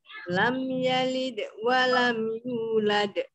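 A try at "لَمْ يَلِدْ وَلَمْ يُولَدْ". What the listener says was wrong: Nah, jangan berhenti, jangan lam yalid wa lam, jangan berhenti, sambung, habis berhenti nyambung.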